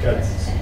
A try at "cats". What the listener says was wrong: Cats. At. So that it doesn't sound like. Cuts. He cuts his bread with a knife. Oh, cuts. Cots. I have 3 cats. Cats. These vowels, you have to make sure that we sound them out.